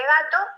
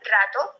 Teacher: cambio este fonema, que es la G, por un fonema vibrante como es una R, diré en vez de gato, rato.